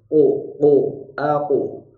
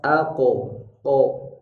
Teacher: Tapi bunyi o yang tidak lepas. Kalau lepas jadi fathah ko. Jadi ko-nya itu tertahan, tidak lepas. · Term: bunyi qalqalah